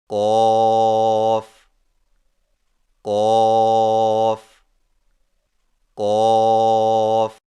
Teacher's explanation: قاف کی ادائیگی میں زبان کی جڑ کو کوے کے متصل تالو پر لگا کر موٹی آواز میں پڑھیں